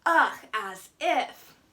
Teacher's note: that hallmark quavering voice that peaks up in intonation at the end of the sentence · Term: uptalk